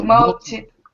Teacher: multitask. Good. With the stress on task.